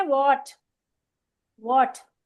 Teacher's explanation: तो आप इसको होठों को गोल करके वॉट बोले, वॉट। तो आपका लगेगा बिल्कुल वॉट जैसे हुआ आप माँ।